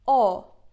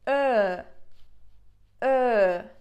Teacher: When you say O, like your mouth is literally like a circle, and when you say Ö, the circle is just smaller.